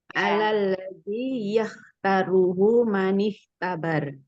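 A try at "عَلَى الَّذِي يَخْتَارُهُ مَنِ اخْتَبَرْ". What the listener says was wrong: Ya, bagus.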